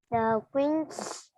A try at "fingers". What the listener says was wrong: Fingers. Fingers. Phát âm chữ G nha em, chứ không phải chữ the. Fingers.